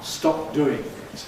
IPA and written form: ˈstɒp̚ ˈduːɪŋ ɪt (Stop doing it)